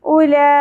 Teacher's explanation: لا, لام کی کھڑی زبر کے اوپر آپ کو بڑی مد دکھائی دے رہی ہے, وہ کیوں ہے؟ کیونکہ ایک ہی کلمہ کے اندر مد اصلی کے بعد سبب مدہ حمزہ آ گیا, اس وجہ سے یہاں پہ مد متصل ہوگی جو کہ 5 الف کے برابر کھینچی جاتی ہے